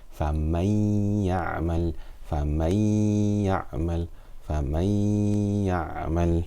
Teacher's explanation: I'm completely merging the Noon Sakin into the Ya and reading it as one letter, but with Ghunnah for 2 harakat. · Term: Idgham with Ghunnah